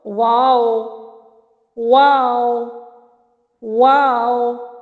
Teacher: دونوں ہونٹوں کے گول ناتمام ملنے سے واو ادا ہو رہا ہے